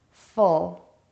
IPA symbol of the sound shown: ʊ